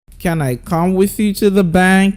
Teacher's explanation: But then, if you know how to use the rising tone, you know that there's a pattern we use in asking our question, which is to use the high pitch at the beginning of the question and at the last word of the question. So you go, can I come with you to the bank?